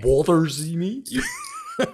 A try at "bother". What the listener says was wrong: Say, open your mouth a little more. Go bother.